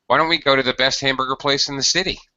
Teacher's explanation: this is a yes or no question so your intonation has to rise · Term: rising intonation